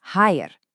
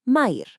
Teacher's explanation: That Armenian R sound, you're going to want to roll it.